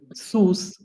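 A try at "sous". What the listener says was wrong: সুস না, লাস্ট এ সাইলেন্ট, সু। সু, হ্যাঁ।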